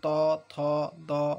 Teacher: আর এইগুলো তো তোমরা সবাই বুঝতে পারবে যে ত থ দ ধ দন্তন্য, সব কটা উচ্চারণ করতে গেলে আমাদের জিভটা দাঁতে ঠেকছে। ভালো করে নিজেটা দেখো, ত থ দ সব আমাদের দাঁতে ঠেকছে, তাই এগুলোকে বলা হচ্ছে কিনা দন্তবর্ণ।